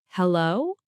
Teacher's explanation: When English speakers answer the phone, they usually just say, hello, with a rising intonation. It sounds like a question.